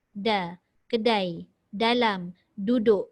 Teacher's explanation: Bukan dekat belakang gigi. Tapi lidah kita parking dekat lelangit keras yang tengah tu. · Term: huruf D